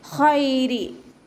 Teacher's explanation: ഖൈരി ഇവിടെ യാ എന്താണ്, ലീൻ അക്ഷരമായിട്ടാണ് യാ എന്നെ നമ്മൾ പരിഗണിക്കുക. കാരണം യാക്ക് സുക്കൂനും മുന്നേയുള്ള അക്ഷരത്തിന് ഫത്തഹയും വന്നു, അപ്പോൾ നമ്മളൊന്ന് സോഫ്റ്റ് ആക്കിയിട്ട് ഉച്ചരിക്കുക